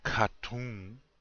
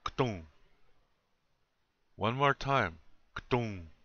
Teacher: No, there's no A in there. Between that K and the T, there's nothing.